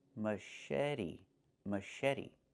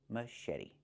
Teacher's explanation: The t makes a fast d.